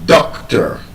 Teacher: That word is a noun, and being a noun, the stress is on the first syllable